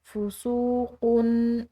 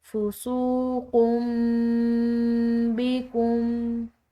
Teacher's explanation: آگے دیکھیں فُسُوقٌ بِكُمْ، یہاں پر قوف کی تنوین ہے اور اس کے بعد با آ رہی ہے، تو ایسی صورت میں جو تنوین ہے یہ میم سے بدل جائے گی، یعنی کہ اس صورت میں تنوین کی آواز نہیں ہوگی بلکہ تنوین کی جگہ پر میم پڑھی جائے گی